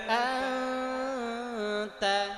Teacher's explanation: নুন সাকিন ও তানবিনের পরে যদি এই 15টি হরফের একটি হরফ আসে তাহলে এটি ইখফা গুন্না হবে। এই নুন সাকিনের পরে তা আসছে ইখফার হরফ, এজন্য এটা ইখফা গুন্না